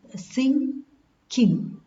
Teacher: Ng, as in king, the final sound of sing, king. Voiced velar nasal.